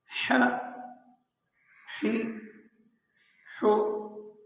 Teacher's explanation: درمیانے حلق سے اسے ادا کرنا ہے